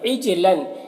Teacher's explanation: عجلن، جیم میں قلقلہ ہوگا اور لام میں تنوین کے بعد جیم ہے حروف اخفا میں سے، تو تنوین میں اخفا ہوگا، تنوین کی آواز کو ناک میں چھپا کر پڑھیں گے